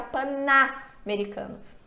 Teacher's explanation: Se eu fizer a junção, a vogal A, que vem no americano, faz com que o som desse N se altere. Ele não é mais pan-americano, ele vira pana-americano.